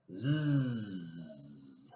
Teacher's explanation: The zzz has the vibrations in the throat. It's a voiced sound. And the s does not.